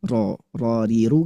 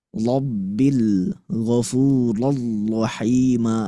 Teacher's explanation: Getarannya yang harusnya ke depan ya Bunda sekalian, malah saya ke belakangin. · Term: ro-nya natural